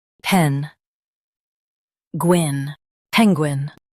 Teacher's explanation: Stress pen and keep Gwyn light.